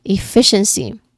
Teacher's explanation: Pronunciation wise, the second syllable is stressed